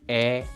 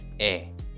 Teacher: However, most Koreans pronounce these two vowels almost same.